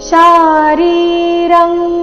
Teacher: ಅನುಸ್ವಾರದ ಉಚ್ಚಾರಣೆ ಕ ವರ್ಗದ ಅನುನಾಸಿಕ ಂಗ ರೀತಿ